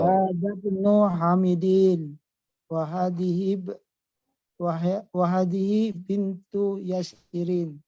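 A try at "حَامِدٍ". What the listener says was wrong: Di panjang pendeknya yang Hamid ya kurang dikit aja.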